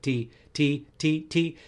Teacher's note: When you say T, there's always going to be some air coming out. And a lot of singers they flavor the T with D.